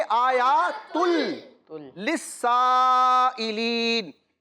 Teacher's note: इस 2 पेश की तनवीन को हमने लाम के साथ मिलाना है, लेकिन गुन्ना नहीं करना। वैसे अगर आप पढ़ें तो ये इस तरह पढ़ा जाता है, आयातुन लिस्साइलिन, लेकिन हमने जब इदगाम का कायदा लगाना है तो तनवीन को लाम के साथ मिलाना है।